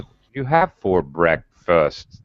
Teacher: The last three syllables, I'm slowly going down, down in my tone, in the like musical notes, my pitch actually. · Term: final falling intonation